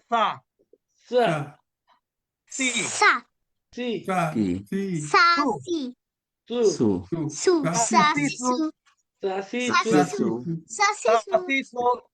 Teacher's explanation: উপরের দাঁতের আগা, উপরের দাঁতের আগা। তাহলে জিহ্বার আগা উপরের দাঁতের আগার সাথে যুক্ত করে এই তিনটা অক্ষর উচ্চারিত হয়